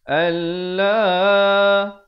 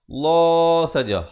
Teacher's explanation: Dibacakan lafzul jalalah ini dengan tebal 2 harakat.